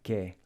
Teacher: Notice how it's not pronounced /che/ but /ke/ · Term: hard k sound